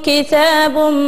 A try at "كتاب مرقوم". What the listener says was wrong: عيدي كتاب مرقوم لا انتبهي تاء غير مثلثة غير معجمة يلا